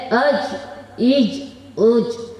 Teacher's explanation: جیم، شین، یا کا مخرج زبان کا بیچ کا حصہ اور اوپر کے تالو سے ادا ہوتا ہے